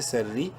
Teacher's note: پڑھیں گے، بمعروف او، سین را زبر سر، را زیر ری، را کو باریک پڑھیں گے زیر کی وجہ سے